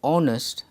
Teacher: the word honest begins with the vowel sound because the sound of the letter h is silent therefore it is pronounced honest and ann is used he is